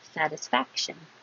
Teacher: Your tongue goes up to the K position, and then the sh.